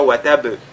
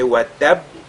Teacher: ici on fait qalqala sur la lettre ba qui plus est doublé dans ce cas